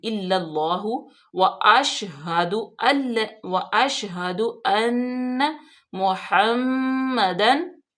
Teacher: ह इल्लल्लाहु, लाम मुशद्दद, हमजा जेर लाम, इल्लाम जबर ला, उसको फिर लाम को फिर लाम में मिला देंगे, अल्लाह की लाम में, और अल्लाह की लाम पुर भी पड़ी जाएगी क्योंकि अल्लाह की लाम से पहले जबर है।